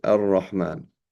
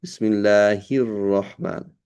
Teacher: Two Ra's. You drop one of the shaddas, you drop a Ra.